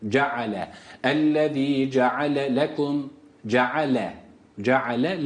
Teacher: ceale a sesiyle okunuyor bu burada Hemze Yok